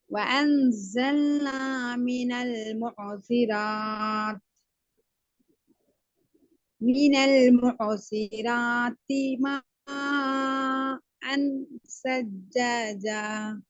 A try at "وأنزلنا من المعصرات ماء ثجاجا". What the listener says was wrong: இல்லையே, மா ஆண் தானே வருது. மா ஆண் அல்ல, ம அன். அன் அன் wrong.